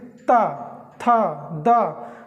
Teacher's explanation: जो हमारी जीभ है वो एकदम दांत में छूती है